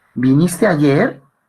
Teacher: el ascendente que se encuentra en las oraciones interrogativas totales